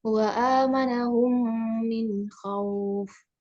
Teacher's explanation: Mim sukun bertemu dengan mim. Maka dibacanya dengan didengungkan dua harokat. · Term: idgham mimi